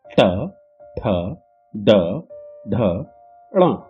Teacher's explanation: तालु पर जीभ लगाकर दांतों से टकरा कर निकलने वाले वर्णों को मूर्धन्य कहते हैं